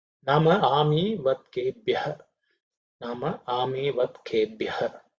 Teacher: it's reasonably simple, except the bha, which is aspirated